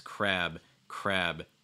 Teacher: that you're you're getting that voiced sound so it's not it's making sure that it's voiced at the same time you're making that b sound